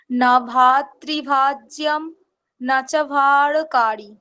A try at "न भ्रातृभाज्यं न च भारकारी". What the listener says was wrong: ঠিক, রটা একটু অভ্যাস করতে হবে।